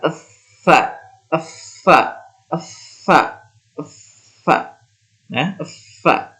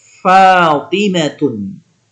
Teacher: ada celah, ada udara yang keluar dari celah-celah gigi kita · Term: huruf fa